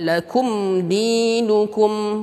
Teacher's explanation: mim di sini izhar syafawi, tidak didengungkan, tidak juga disamarkan.